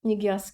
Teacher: Əgər q samiti Cingiltili samitdən əvvəl gəlibsə, elə q kimi qalır. Miqyas kimi də tələffüz edirik.